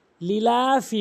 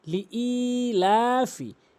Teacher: অবশ্যই হামজা দিয়ে ইয়াকে ধরতে হবে জজমের কারণে এবং এক আলিফ টেনে পড়তে হবে। ই হামজা ইয়াজের ই, লিই লামখারা জবর লা, অবশ্যই এক আলিফ টানতে হবে, কেননা খারা জবর খারাজের উল্টো পেশকে এক আলিফ টেনে পড়তে হয়।